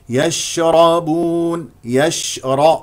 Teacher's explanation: فيها تفشي ساكن الشين يجري فيها النفس ويجري فيها الصوت